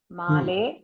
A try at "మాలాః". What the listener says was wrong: అని వదలకూడదు అండి మాలాహ అనాలి